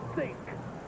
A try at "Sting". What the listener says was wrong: Sting, G, not K.